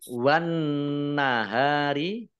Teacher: Wan nahari, alif lamnya alif lam syamsiyah karena tidak dibaca.